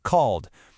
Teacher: So if the verb ends with a sound that has no voice, like the K in work, the ending sounds like a T, worked. If the verb ends in a voiced sound, like the L in call, it's a D sound